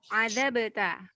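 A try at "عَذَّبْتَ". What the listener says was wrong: Zalnya tasydid. Azabta.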